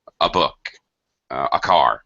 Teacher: the a article is just a a book a car very closely joined with the next letter